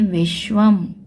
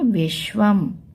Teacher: के श और व एक ही में जोड़कर लिखे गए और ऊपर क्योंकि अनुस्वार बिंदी भी है तो म की आवाज भी आएगी